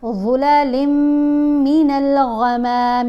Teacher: ظا کو ادا کرتے ہوئے آپ نے زبان کو دانتوں کے درمیان میں رکھنا ہے، لپس کو گول کر کے پڑھیں گے تو اس کی آواز ٹھیک پیدا ہوگی، پھر لام کو میم